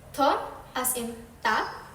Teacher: the tongue contacts the alveolar ridge just behind the upper front teeth.